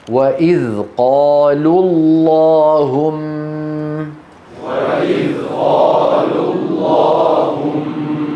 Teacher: نسقط الواو لفظا لا خطا، نقول وإذ قالوا اللهم.